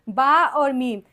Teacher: دونوں ہونٹوں کو ملانے سے با اور میم یہ دو حروف ادا ہوتے ہیں